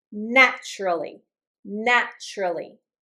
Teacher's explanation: When I have a T followed by a U sound. So, I'm getting a T and then a Y together. It's going to sound like a ch.